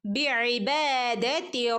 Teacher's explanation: Okay, ബിഇബാദതി ബി ഐൻ ഉച്ചരിക്കുമ്പോൾ പ്രത്യേകം ശ്രദ്ധിക്കണം. തൊണ്ടേൻ്റെ നടുക്ക് നിന്ന് വരുന്ന അക്ഷരമാണ് ഐൻ.